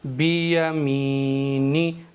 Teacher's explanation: नून को मैंने जरा सा भी नहीं खींचा है।